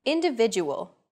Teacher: The stressed syllable vi in individual is deemed more important, so it's pronounced longer than all other syllables.